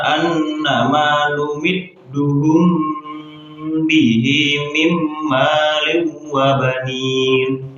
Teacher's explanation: Ya, jadi di situ ada huruf mim sukun bertemu dengan huruf ba, maka harus dengung karena hukumnya adalah ikhfa syafawi